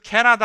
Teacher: 캐나다 했을 때 강세가 첫 번째 음절에 오고 그 다음에 두 번째, 세 번째 음절에서는 강세가 오지 않아요. 이 캐나다 같은 경우도 하나의 풋이죠.